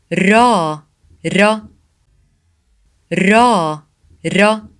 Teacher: Ra sounds like the English ra in run, but with a slight roll of the tongue